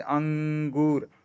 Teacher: अनुस्वार में अगर आप देखेंगे तो अनुसार में हम बात कि मुख थोड़ा कम खुला रहता है नाक से अधिक जोर हवा बाहर निकलती है